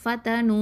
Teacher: அந்த ஃபங்கிறது உதடெழுத்து, தங்கிறது தரஃபுல் லிசானு, அடுத்தது நூனும் தரஃபுல் லிசான் தான். · ஃப ஃபத்ஹா ஃப, த ஃபத்ஹா த, ஃபத, நூன் தமா, வாவ் சுக்கூன், நூ, 2 அலிஃப் நீட்டணும்